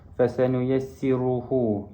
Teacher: ru di sini adalah ra tafqim, dibaca dengan tebal kerana ra di sini berbaris dhammah